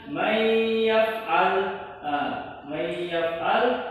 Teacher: yang mana nun mati bertemu dengan ya, maka dia dileburkan, didengungkan sebanyak 2 harokat. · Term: idgham bi gunnah